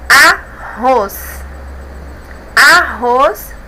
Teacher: a última é a mais forte então é oxítona